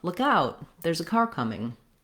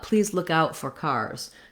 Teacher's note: even when I use the phrase look out for, please look out for cars, I'm going to be stressing on that out, look out for.